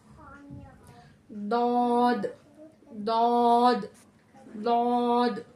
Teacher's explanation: मुंह में हवा भर जाएगी और मोटी आवाज में हमारा निकलेगा